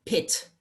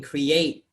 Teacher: in pit, the word pit, the T is more pronounced. But in create, it's kind of almost omitted